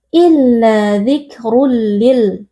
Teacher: Tanwin kita masukkan atau kita leburkan ke dalam huruf lam, lalu kita baca tanpa berdengung. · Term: idgham bila gunnah